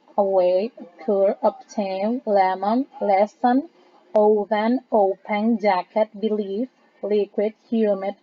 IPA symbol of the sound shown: ə